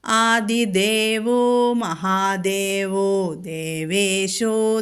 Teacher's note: ആദിദേവഹ മഹാദേവഹ പിന്നെ ദേവേശഹ അപ്പൊ അവിടെയെല്ലാം ഓകാരം വന്നു